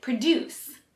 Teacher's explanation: Produce puts an emphasis on the second syllable and means to make something.